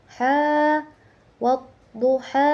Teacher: Di situ terdapat eh hukum tajwid mad thobi'i eh dibaca dua harakat. Karena ha itu berharakat ee fathah panjang dibacanya dua harakat. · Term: matobi'i